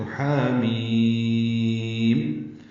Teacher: اور چونکہ جزم آئی آخر میں میم پر، میم آخر میں منہ بند ہوتا ہے، ساکت ہوتا ہے، اس لیے مد لازم حرفی مخفف ہے، یعنی تخفیف ہے، اس میں جلدی پڑی جاتی ہے اور میم میں ہونٹ بند کر لیتے ہیں.